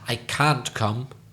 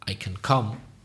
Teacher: when it's negative, we tend to stress the word can't.